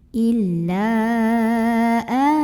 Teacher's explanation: Maka lamnya boleh dipanjangkan 4 atau 5 harokat. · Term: mad jaiz munfasil